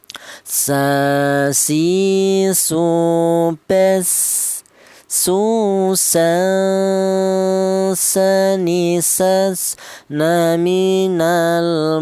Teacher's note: Huruf sin ini keluarnya huruf berasal dari ujung lidah menyentuh pangkal gigi sari bagian bawah. Sa, si, su, bes, su, sa, sa, ni, sas, na, min, al, mus, ni, ma, si, sa, ni, sa.